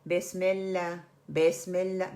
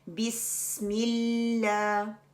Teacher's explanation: सीन की विसली sound आनी चाहिए। उसको थोड़ा टाइम दें। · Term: सफीर